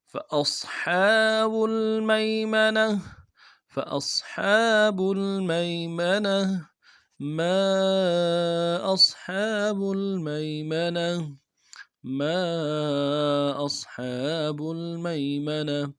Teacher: میم کے ساتھ الف مدہ ہے، ایک الف دال میں کھینچیں گے، اور ساتھ مد بھی ہے، مد عارض، دو الف کی مدال میں کھینچیں گے۔ ما حمزہ کو صاد کے ساتھ ملانا ہے، صاد کو موٹا کریں گے۔ حا کے اوپر کھڑا زبر ہے، ایک الف دال میں کھینچیں گے، با کو لگے لام کے ساتھ ملانا ہے۔